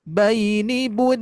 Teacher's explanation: Meskipun nun ini berharokat, tapi tetap ketika diwakafkan jadi sukun, ya. Maka dari itu ketika dibacakan baini bun, ambil dengungannya saja tanpa ada harokat, ya. Kalau diberikan harokat kan baini bun, nah gitu ya.